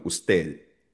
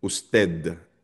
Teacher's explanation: So karamihan sa mga native speakers, yung pagdating sa letter D, kapag ang letter D ay nasa dulo ng salita, madalas, kumbaga parang pahapyaw na lang na binibigkas or minsan nga iniiwanan na yung letter D